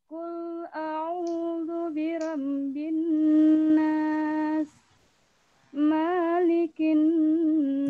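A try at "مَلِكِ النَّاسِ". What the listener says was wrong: Ingat, mim di situ pendek. Ya, jangan malikin, tapi malikin nas. Nah, kan masih pendek. Mimnya pendek. Bacanya malikin nas, bukan malikin nas.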